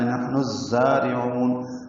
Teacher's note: عین وسط حلق سے ادا ہوگا اور اس کو لمبا کریں گے